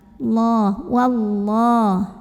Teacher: Lam pada lafaz Allah dibunyikan secara tafkhim. Kenapa? Karena huruf sebelumnya barisnya fathah, maka bacanya tebal.